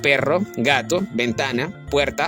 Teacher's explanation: Todas esas palabras llevan la fuerza de voz en la penúltima sílaba. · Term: graves